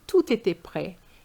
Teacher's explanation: Just link it, the T and the E. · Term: liaison